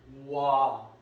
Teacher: 오에서 출발해서 아로 가거든요. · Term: 이중모음